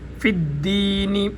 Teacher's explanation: فا اوپر والے دانتوں کو جب نیچے والے ہونٹوں کے ساتھ لگائیں گے تو فا ادا ہوگی